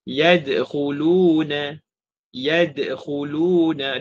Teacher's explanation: Jadi qalqalah kecil ni tak perlu baca over ataupun ada pause ataupun ada berhenti. Tak perlu. Kita hanya perlu direct terus sambung. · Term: qalqalah sughra